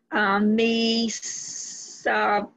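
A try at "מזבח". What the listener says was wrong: The test and the zayin, the word with a shva, you gave it too much emphasis in. You have to give it, connect it to the letter before. It's not a vowel.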